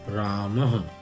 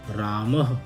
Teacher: इसमें अह की ध्वनि आ रही है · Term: विसर्ग